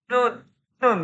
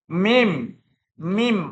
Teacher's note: Coba nun, nun nggak muncul, mesti nun. Mim, mim mau diharokat fathah, kasroh, dhammah atau ditasdid apalagi pasti melibatkan hidung. Namanya gunnah.